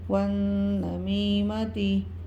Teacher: نون مشدد میں غنہ ہوگا ایک الف کی مدار تک